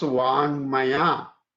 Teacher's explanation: So this becomes anunasika of the same class. The anunasika of the ka class is ng. So it becomes vangmaya.